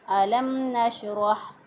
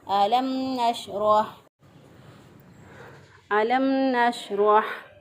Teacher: इज़हार का मतलब ये है कि यहाँ पे हम गुन्ना नहीं करेंगे, नाक में आवाज़ नहीं ले जाएंगे, होंठों को जो थोड़ी देर बंद रखते थे वो बंद नहीं रखेंगे, बल्कि इसको जल्दी से होंठों को खोल कर अदा करेंगे। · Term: इज़हार शफ़वी